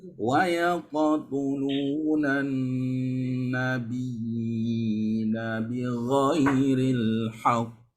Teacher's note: nun bertasydid, ingat ya, musyaddada, wajibul gunnah